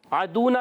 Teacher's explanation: عدونا میں عین پر زبر عین حلق کے درمیان والے حصے سے حرکت کو نہیں کھینچیں گے.